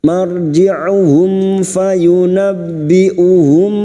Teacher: mim sukun bertemu Fa Idhar syafawi mim sukun dibaca jelas tanpa mendengung